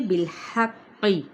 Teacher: قاف تشدید کے ساتھ ہے، قاف پورا آئے گا ہر کنڈیشن میں